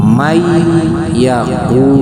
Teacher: suara nun matinya tidak terlihat, tidak terdengar atau digabungkan atau disatukan dengan huruf ya, yaitu huruf setelahnya menjadi mayak Jannatin naim. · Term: idgham, idgham ma'al gunnah